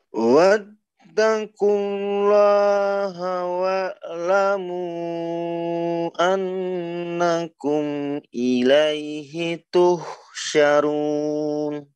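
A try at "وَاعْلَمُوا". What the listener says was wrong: Tadi mantul ainnya, jangan sampai mantul. Wa'lamu, palingkan sedikit. jangan gini ya, Bang ya. Jangan kita beratkan mulut kita. Sebenarnya mulut kita tidak terlalu berat. Yang berat itu, yang berperan itu adalah apa, lidah sebenarnya kita ya.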